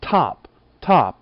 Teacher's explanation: the T in top has a little puff of air right after it hold your hand in front of your mouth when you say